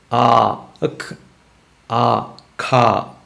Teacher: Kha stops it, and then lets go the air, k, kha. So that's how you get the sound.